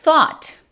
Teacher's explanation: ese A es como entre O y A en español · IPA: /θɔt/